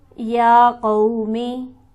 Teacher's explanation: یا پر ہمارے پاس کھڑی حرکت موجود ہے، اسے ہم کھینچیں گے 1 الف کے برابر